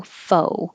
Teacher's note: Forget about the X. It's from French, so no sound, just O